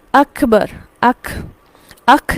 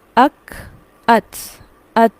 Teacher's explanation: بیچ میں ایڈ نہیں ہوگا، لیکن ہلکی سی سانس جاری ہوگی. اک، ات، یہ آواز اسے کہتے ہیں صفت ہمس.